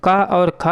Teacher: क और ख है दोस्तों ये कंठ ध्वनियों के अंतर्गत आती हैं